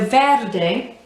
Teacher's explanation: describe it yeah so verde rolling the r again um and pronouncing every single letter so even the e on the end eh and keeping the mouth open with that vowel sound a